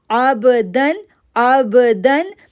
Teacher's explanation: آئین کو با کے ساتھ جوڑا، کلکلا ساؤنڈ بنایا